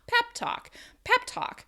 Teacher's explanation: that pep is stressed and talk is not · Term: word stress